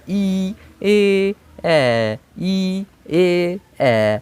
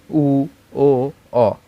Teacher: আমরা যখন ই এ এ এই তিনটে উচ্চারণ করব, আমাদের ঠোঁট দুটো দেখো দুই দিকে ছড়িয়ে যাচ্ছে, দুই দিকে ছড়িয়ে যাচ্ছে, ই এ এ ই এ এ। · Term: প্রসারিত